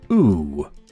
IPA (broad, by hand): uː